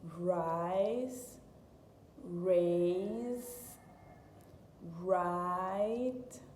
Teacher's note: we have to kind of pull it back and kind of curl it curl it towards the roof of the mouth